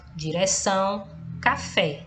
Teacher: perceba que a última sílaba é pronunciada com mais intensidade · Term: oxítonas